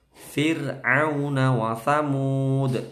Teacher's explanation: ro sukun sebelumnya ada kasroh, roknya itu tipis, tarqiq, meringis. Fir'auna, bukan fir'au tapi au.